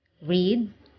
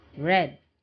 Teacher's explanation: The spelling of the verb read does not change, but its pronunciation changes. The pronunciation changes from long E to short E. · The pronunciation changes from long E to short E. Read, read.